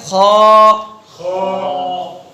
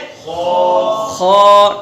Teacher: تو جب ہم خو ادا کریں گے تو زبان کی جڑ کو اوپر اٹھائیں گے۔ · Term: استعلا